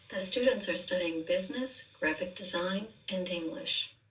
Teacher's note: we have a down pitch at the end telling us we're done with the the sentence · with business we're still on a rise here because again that's telling us we're not done and then we see with graphic design which has a drop · And then we see with graphic design, which has a drop here before we begin the rest of that thought group, and we have a down pitch at the end telling us we're done with the sentence